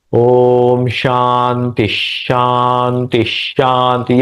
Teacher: दूसरा वाला और तीसरा उसके बीच में जो विसर्ग है तो विसर्ग और इसके बाद में आने वाला जो श है उसका हम द्वित्व करते हैं